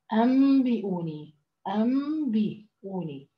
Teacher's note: طيب الميم المدلة هذه الميم إذا كان النون والباء اللي هم اللي صار بينهم الحكم الإقلاب، معناته هاي بنسميها ميم الإقلاب، وهي ميم مخفى، يعني النون يلغى لفظها، تستبدل لفظها بالميم وهي ميم مخفى، وبعدها الحرف الباء